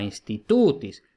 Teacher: como la penúltima tiene el macrón, entonces va acentuada